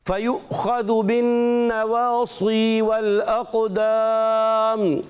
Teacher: قاف کو موٹا رکھنا ہے اور پر بھی کرنا ہے اور ساتھ میں قلقلہ بھی کرنا ہے